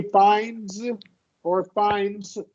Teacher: I kind of didn't notice I'm dropping D, but I've been dropping D.